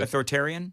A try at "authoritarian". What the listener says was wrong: No, you kind of skip over the I sound in the middle. Authoritarian.